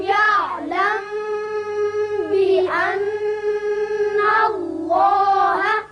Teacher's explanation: یعلم میم ساکن کے بعد چونکہ با آ گیا یہاں اخفاء شفوی ہوگا. نون مشدد ہے، غنہ کریں گے.